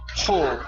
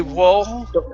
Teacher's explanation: the W isn't going to make a sound. It's going to be the H.